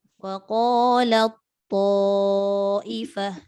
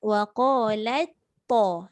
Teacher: Kita masuk sepenuhnya pada huruf kedua tanpa ada bayangan huruf pertama.